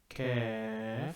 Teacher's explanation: It uses the tongue, but if you feel it, the K sound, very back of the tongue.